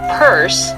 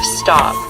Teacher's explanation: certain consonants when they fall at the end of a word we aspirate the p at the beginning of purse all day long but we swallow it at the end of stop